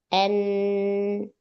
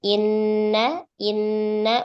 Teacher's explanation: tertutupnya makhraj nun, akhirnya suara enggak bisa keluar dari sini, maka keluarlah suara dari hidung. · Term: ghunah